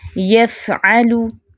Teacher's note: फ़ा में क्या है, सिफ़्ते हम्स भी है और रखावा भी है, तो आवाज़ भी चलेगी, सांस भी जारी होगा। यफ़अलु बिअल्सिनतिन, बिअल्सिनतिन।